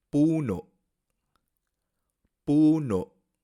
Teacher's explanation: Parece que hay un cierre abrupto de la garganta al pronunciar la última sílaba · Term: cierre glotal